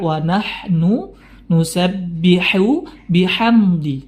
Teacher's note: ha Di sini ada huruf ha waahnu nusabbihu bihamdi jadi ya hati-hati jangan sampai membaca ha di situ dengan ha yang tebal